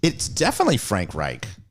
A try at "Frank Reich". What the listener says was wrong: Reich. But you're saying it like there's a K, and it's Reich. That's Reich. Yeah, but the Frank is CH too. It's the Frank. Reich.